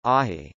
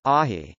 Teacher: a phonemic distinction between a word beginning with a vowel and a word beginning with a glottal stop followed by a vowel